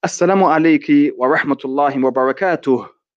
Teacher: You see how I didn't pronounce the last fatha or the last kasra?